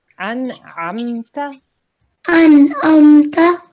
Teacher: So we don't want to hold on the meme. We just say the meme softly.